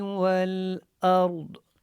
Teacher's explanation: واو اور لام کو جب آپ نے ملانا ہے تو آپ نے اچھے سے ملانا ہے، کیونکہ لام کے اوپر جو ہے وہ آپ کو یہاں پہ دیکھیں جزم نظر آ رہا ہے اور یہ ساکن ہے لام، تو ولا نہیں بنانا، اس کو ول پڑھنا ہے۔